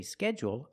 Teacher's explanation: When I say schedule, I have a dark L. But when I say scheduling, is it dark or light?